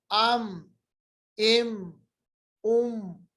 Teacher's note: मीम पढ़ते वक्त खुश्क वाला हिस्सा होंठों का आपस में मिलाने से अदा होता है